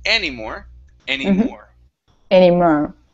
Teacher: one more time the stress on it is any more okay the stress is at the very end